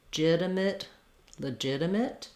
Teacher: because the jit syllable is stressed, this is actually an I vowel or reduced vowel.